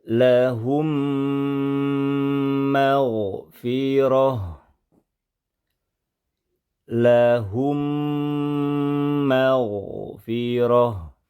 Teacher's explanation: satu huruf mim yang bertasdid ya jadi satu huruf mim kemudian setelah digabungkan jangan lupa sertakan ghunah sertakan dengung yang lamanya kurang lebih dua harakat saja · gabungkan dan dengungkan mim yang pertama melebur ke mim yang kedua kemudian sertakan guna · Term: idgham mithlain shagir